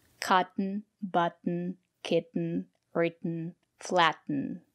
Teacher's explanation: the letter t as D potato and we have these words we pronounce the letter t t as a stop T